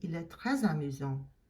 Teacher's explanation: Because amusant starts with a vowel, so you're going to pronounce that S and it's going to sound like a Z sound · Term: liaison